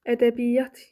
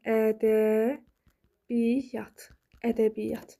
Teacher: Məsələn, deyirəm, ədəbiyyat. Ədəbiyyat yazıram, amma bir y ilə tələffüz edirəm.